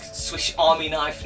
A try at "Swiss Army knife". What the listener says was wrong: Swiss Army knife. You said swish.